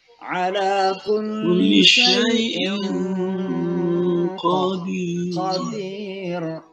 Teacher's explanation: Tanwin ketemu qaf, itu namanya ikhfa ya, samar-samar baca n-nya ya